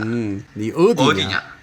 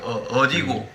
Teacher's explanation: the accent is on the first syllable in Jeolla province instead of toward the end.